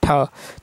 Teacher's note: तो मुर्धन्य महाप्राण अघोष व्यंजन वर्ण का उदाहरण ठ है